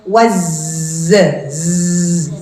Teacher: seri bawah makhrajnya adalah ujung ee ujung lidahnya ya bukan giginya makhrajnya itu lidahnya ujung lidah dengan gigi seri bawah nah huruf Zai ini meskipun dia huruf saofir huruf yang berdesis